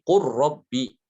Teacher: dia juga diidghamkan ke dalam huruf ra karena huruf lam dengan ro itu berdekatan ya. Menurut sebagian besar pendapat ulama itu huruf lam sama ro makhrajnya itu berdekatan ya.